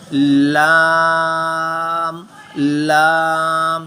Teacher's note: لام کی آواز جب ہم نے جو مخرج اس کا دیکھا تھا، لام کے لیے زبان کا بالکل جو کارنر ہے آگے والا کونا، اس کو پیلٹ کے ساتھ، اپر پیلٹ کے ساتھ ٹچ کیا جاتا ہے